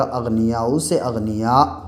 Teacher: جب رکتے ہیں اور سانس توڑتے ہیں تو یہ جو پیش ہے یہ گر جائے گا، اغنیاء سے اغنیاء ہو جائے گا، ٹھیک ہے۔ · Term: وقف